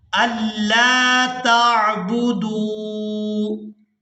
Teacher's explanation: لام کو یہاں الف مدہ کی وجہ سے کھینچ کر ادا کیا جائے گا